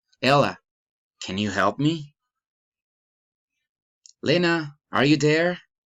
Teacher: direct address rising intonation